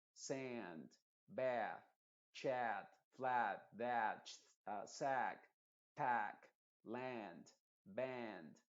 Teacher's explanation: esta A en estas palabras cortitas normalmente es una A modificada y que suena como una EA para nosotros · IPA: /sænd/